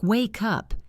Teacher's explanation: When I say it naturally, I say wake up. The K sound at the end of wake connects to the U sound at the beginning of up.